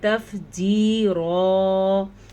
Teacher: یا ساکن سے پہلے زیر تو یہ یا مدہ, اسے ہم کھینچیں گے تف جی رو, ہم نے یا کو کھینچا ہے.